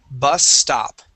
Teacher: she is not pronouncing two s's she's pronouncing One S bus stop okay now two s's would sound like this bus